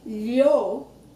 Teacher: But when I say lho, the middle of my tongue is touching the roof.